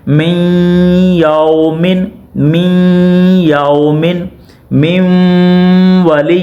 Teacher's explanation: یہاں پہ ادغام بھی ہو رہا ہے اور ادغام کے ساتھ ساتھ گنہ بھی ہو رہا ہے